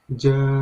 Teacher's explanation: ada hukum bacaan mad wajib mutasil yang di huruf ja. Nah, itu kalian bacanya 5 harokat ya.